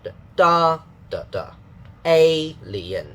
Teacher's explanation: the first part will be the strong part with a higher pitch